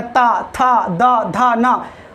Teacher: जिसके व्यवस्थित दांत होंगे ना वही बोल पाएगा ता, था, दा, धा, ना, बगैर आप दांत मिलाए आपस में बोल ही नहीं सकते हैं तवर्ग